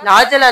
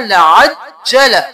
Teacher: लअज और जला, जीम को दो बार , लाजला नहीं करना, लअज्जल, बल लहुम, अब यहाँ पे हम